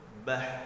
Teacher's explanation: salah satu sifat dari huruf ha adalah rakhawah, di mana dia dibaca dengan berlalu tanpa ditahan pada saat dia sukun. Ya, perhatikan pada saat dia sukun bah mengalir, jangan ditahan, jangan bah, tapi bah mengalir ya teman-teman ya.